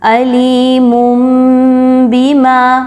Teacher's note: عذاب علیم بما، غنہ کرتے ہوئے میم کی ادائیگی ہوگی، علیم بما، تنوین کی آواز ٹوٹلی میم میں کنورٹ ہو گئی۔ اقلاب کا مطلب ہی یہی ہوتا ہے کہ بدل دینا۔